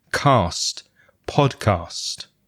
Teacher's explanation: the collection of consonant sounds at the end, the S and the T together. Cast, the same as in last or fast.